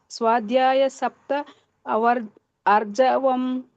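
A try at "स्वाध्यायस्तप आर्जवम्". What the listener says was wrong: ಸ್ವಾಧ್ಯಾಯಸ್ತಪ, ಅಲ್ಲಿ ಸಪ್ತ ಅಲ್ಲ ಸ್ತಪ ಅಂತ ಬರ್ತದೆ. ಸ್ವಾಧ್ಯಾಯ ಮತ್ತೆ ತಪ, ಅದು ಸ್ವಾಧ್ಯಾಯಸ್ತಪ ಅಂತ ಬರ್ತದೆ. ಸ್ವಾಧ್ಯಾಯಸ್ತಪ ಆರ್ಜವಂ.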